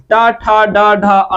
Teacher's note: ट ठ ड ढ अण का उच्चारण स्थान मुर्धा है